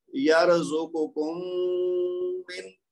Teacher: پہلی میم دوسری میم کے اندر مکس ہو گئی ہے · میم اور میم کا آپس میں ادغام ہو گیا